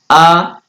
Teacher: आ, ये हमारे जिह्वा के बीच भाग से बोले जाते हैं। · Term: मध्य स्वर